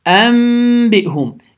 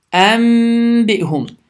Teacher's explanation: N səsi m səsinə çevrilir. Səs burundan çıxır və 2 saniyə miqdarında uzadılır. Ən yox, ənbihum. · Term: iqləb